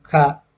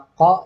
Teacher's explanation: Jadi beda antara ko dan ka. Kalau yang ka tadi dorsovelar, kalau yang ko dorso uvular.